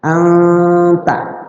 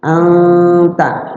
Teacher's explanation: Jadi disamarkan huruf nunnya itu, huruf nunnya disamarkan. Cara baca samarnya itu adalah ya sedikit agak dengung lah, sedikit dengung, tapi siap-siap lidah kita ke huruf tak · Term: ikhfa